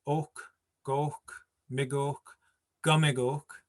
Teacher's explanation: I force that stress on that third last syllable.